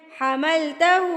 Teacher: حملتہ میں ہا الٹا پیش کو آپ نے لمبا کر کے پڑھنا ہے